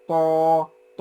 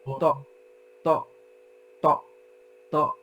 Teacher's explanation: আমরা ত যদি মাদ দেই তাহলে কি হয় ত ত, আর যদি শার্প স্টপ করি ত ত ত ত